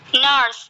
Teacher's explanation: the tongue is positioned halfway between a front vowel and a back vowel. An example which is made to pronounce the word nurse in British English. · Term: central position